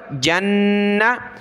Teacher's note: جیم کو نون کے ساتھ ملا کر غنہ کریں گے نون پر